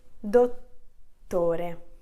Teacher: La parola corretta è dottore, quindi sentite la doppia T, si sente molto bene. Se io tolgo una T, il suono cambia e cambia anche la pronuncia, quindi io dirò dotore.